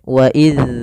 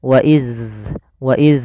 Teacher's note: Tidak inhibas, tidak ditahan sebagaimana kalau dia syiddah. Maka harus dialirkan suaranya ketika melafalkan dzal sukun. Wa iz, ada alirannya. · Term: rokhawah